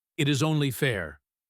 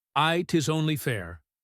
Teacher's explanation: The T in it blends with the is. 'Tis only fair.